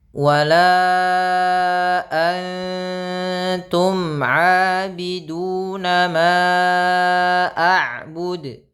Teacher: Kemudian sama wala antum, mad jaiz juga sama, kita panjangkan 4 harokat. · Ini ikhfa dibaca dengan samar ya, ikhfa dibaca dengan samar suara nun ya.